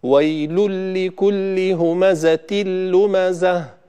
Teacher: لاحظوا أن النون ذهبت بالكامل، ولذلك سميناه إدغام كامل. ولاحظوا أنه لا يوجد غنة نهائيا، ولذلك نسميه إدغام بغير غنة.